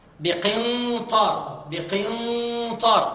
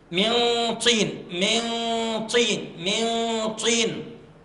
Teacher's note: الإخفاء قوي والغنة مفخمة لأن الطاء من حروف التفخيم